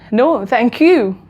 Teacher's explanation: so the word you has been stressed here why because you are paying thanks back to them · the word you is gonna be like a pitch higher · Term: intonation